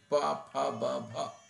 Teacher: जिनके लिए ओष्ठ बताए गए हैं, जैसे प, फ, ब, भ, तो वहाँ पूरे पूरे होठ जब चिपकेंगे तभी उन शब्दों का, उन वर्णों का उच्चारण संभव है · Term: स्पृष्ट